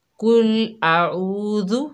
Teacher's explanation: دیکھیے قل اعوذ، تو بعض میری بہنیں غلطیاں کرتی ہیں، کل موٹے کاف کی جگہ باریک کاف پڑتی ہیں، کل اعوذ اس طرح کر کے عین کی آواز بالکل بھی نہیں نکلتی، ذال کو سختی سے پڑھتی ہیں، کل اعوذ۔